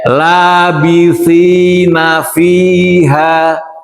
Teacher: Labitina fi panjang dua harakat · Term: mad asli